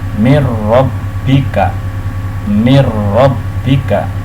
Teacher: tidak ada dengungan tapi dimasukkan mirrobbika. Nah, yaitu nun sukun dimasukkan ke dalam huruf ro, mirrobbika.